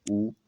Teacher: जब भी ऊ बोलते हैं तो आपके दोनों ओठ आपस में टकरा जाते हैं या पास पहुंच जाते हैं, तो ये हमारा ओष्ठ वर्ण कहला जाता है, ऊ।